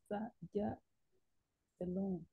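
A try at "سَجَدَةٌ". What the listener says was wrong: C'est le ja, il est long. Sa jadatun.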